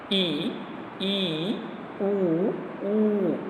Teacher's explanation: संवृत स्वर है समृद्ध स्वर के उच्चारण में मुख द्वार सकरा हो जाता है